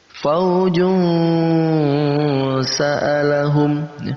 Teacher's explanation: Kita samarkan bacaan tanwin dan sin. Nah, untuk menyamarkannya kita butuh eng di antara tanwin dan sin. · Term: ikhfa